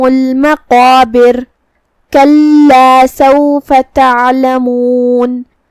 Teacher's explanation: کلمت سوفا کے آخر میں فا پہ زبر ہے تو ہم فا کو زبر سے ادا کریں گے اور اسے ظاہر کریں گے